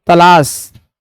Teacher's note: तलाश त ल और स कहां से बोले जाएंगे? दंत से बोले जाएंगे